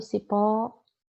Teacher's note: Pó é a sílaba tônica, é a sílaba mais forte. Se a sílaba mais forte da palavra for a última, essa palavra é oxítona, certo?